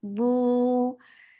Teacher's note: It is 2 counts long and circle your lips.